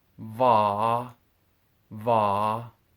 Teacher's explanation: in hoisan for this sound my teeth are actually behind my lips so that when i make it instead of my teeth being